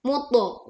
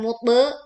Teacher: to sukun. Ini huruf qalqalah dengan bunyi pantulan yang tebal. Muto. Bukan mutbe, tetapi muto.